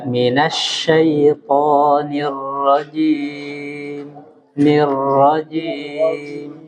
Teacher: huruf ro itu tidak boleh bergetar terlalu banyak.